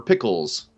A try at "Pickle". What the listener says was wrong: Without the S. Just one pickle.